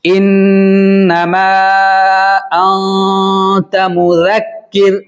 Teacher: नून की आवाज को नाक में छुपा कर पढ़ेंगे 1 अलिफ के बराबर · इन्नमा पर मद्दे मुनफसिल है, छोटी मद है, ठीक है। उसको 3 अलिफ के बराबर खींच कर पढ़ेंगे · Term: इख्फा